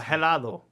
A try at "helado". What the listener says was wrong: Helado. You don't want to say, yeah, that H is silent.